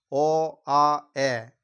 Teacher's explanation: বলে দিয়েছিলাম যে অ আ এইগুলো উচ্চারণ করার সময় কি হয় এগুলো উচ্চারণ করার সময় আমাদের মুখের ভেতরে জায়গাটা বেশি মনে হয় সেই জন্য এগুলোকে বিবৃত স্বরধ্বনি বলে